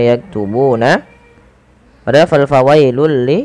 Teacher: tanwinnya langsung dimasukkan ke huruf lam fawailul ya awalnya fawailun karena bertemu dengan huruf lam maka tanwinnya dimasukkan ke huruf lam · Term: Idgham